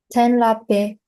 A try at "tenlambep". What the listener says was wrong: Yeah, this is a little hard because you have a pre-nasal here. So it is like lambep.